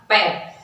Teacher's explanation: फिर है आपके पै वर्ग, तो पै वर्ग जो है, पै जब हम बोलते हैं तो दोनों होठ जो है वो एक दूसरे का स्पर्श करते हैं